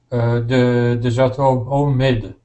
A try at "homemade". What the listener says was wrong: Remember, in English, the letter H is not a silent letter. It says so it's homemade.